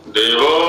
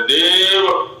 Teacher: तो देव को प्लुत भी किया हमने और उदात्त भी किया